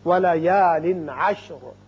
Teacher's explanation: وقت کی صورت میں را ساکن ہوگا اور پر بھی ہوگا، اس لیے کہ پہلے زبر ہے · یہاں تنوین کے بعد عین جو کہ حروف حلقی میں سے ہے آ رہا ہے، لہذا یہاں اظہار حلقی ہوگا